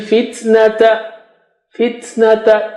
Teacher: ta is hams, okay, because ta has sukun